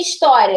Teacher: Já em história, da semivogal foi para vogal. Da mais fraca foi para mais forte, ditongo crescente.